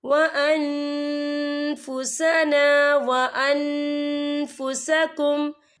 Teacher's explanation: نون ساکن کی آواز کو ناک میں چھپائیں گے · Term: اکفا